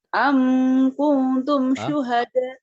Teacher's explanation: Amnya nggak dengung. Am Idhar Safawi.